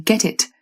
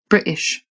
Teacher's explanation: you'll tend to hear a clear t sound, as in get it, or a glottal stop, as in British.